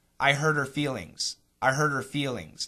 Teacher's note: when those words are in the middle of a sentence very frequently we cancel the H sound